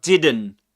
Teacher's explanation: he drops the t sound, the t in the word uh didn't.